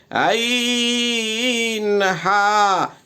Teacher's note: 2 নম্বর মাখরাজ হলকের মধ্যখান হইতে আইন হা